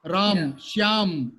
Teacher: In Hindi, people will just delete last vowel.